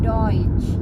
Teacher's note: huruf E ketemu U. Nah, itu dibacanya bukannya eu, tapi dibacanya oi. Contohnya Deutsch, artinya bahasa Jerman, Deutsch.